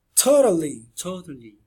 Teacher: Temos dois T's nessa palavra e eles não são iguais. O primeiro é o aspirado, da sílaba tônica, inclusive. E o segundo, que não é uma sílaba tônica, tem esse Tzinho, observe bem.